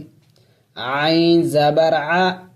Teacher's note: عین حلق سے ادا کیا جائے گا، حروف حلق میں سے ہے